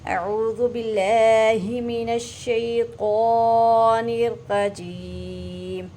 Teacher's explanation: मिनश शैतान मजबूती से पढ़ेंगे शीन को, और तो को पुर करके पढ़ेंगे।